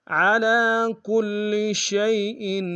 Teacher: ان اللہ کان علی کل شیء، علی میں لام کے اوپر کھڑا زبر ایک انداز میں کھینچیں گے، کاف کو لام کے سامنے گے، شد ہے زور دیں گے، شین کو یا کے سامنے گے، یا لین بغیر کھینچے پڑیں گے، حمزہ کے نیچے تنوین غنہ کریں گے